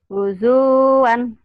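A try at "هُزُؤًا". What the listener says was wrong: Itu mah kepanjangan.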